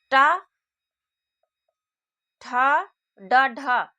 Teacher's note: टा का उच्चारण स्थान दंत से नहीं बल्कि मूर्धा से है।